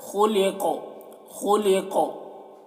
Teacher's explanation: काफ में आवाज़ टकरा रही है, इसी को कलकला कहते हैं